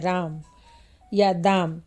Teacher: उपरोक्त दोनों शब्दों में आ स्वर पर सबसे अधिक बलाघात होगा राम के रा पर अधिक तथा म पर कम और दाम के दा पर अधिक तथा म पर ध्वनि कम हो जाएगी · तो उपरोक्त दोनों शब्दों में आ स्वर पर सबसे अधिक बलाघात होगा राम के रा पर अधिक तथा म पर कम और दाम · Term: ध्वनि बलाघात